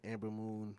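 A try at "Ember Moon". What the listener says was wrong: Ember. You said Amber.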